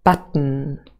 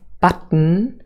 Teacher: you can see a little elevated schwa and that indicates that this consonant is syllabic it forms the core of the syllable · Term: syllabic consonant